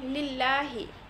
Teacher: যদি জের আসে সেক্ষেত্রে আল্লাহ শব্দটি পাতলা করে পড়তে হয়, যেমন লিল্লাহি, এখানে পাতলা করে পড়া হয়েছে।